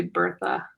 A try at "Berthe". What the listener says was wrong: But you know, it says French and no H. Can't pronounce the H.